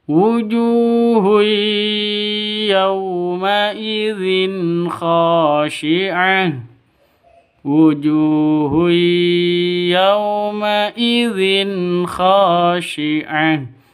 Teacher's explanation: wuju panjang dua ketukan ada wau mati